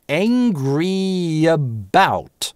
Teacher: Angry about - это напряженный звук, tense vowel, поэтому мы его напрягаем, во-первых, чётко, а, во-вторых, связываем с последующим шва через linking [j]